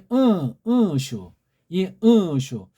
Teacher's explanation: 코 뒤에 울리면서 위로 올라가는 소리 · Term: 콧소리